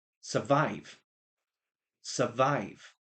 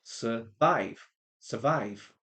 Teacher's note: The big part of that word, the stressed part is vive.